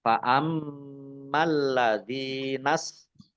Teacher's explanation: mim tasdid dibaca gunnah atau mendengung, ditahan 2 harokat. Kemudian lamnya dibaca double, ada tasdidnya.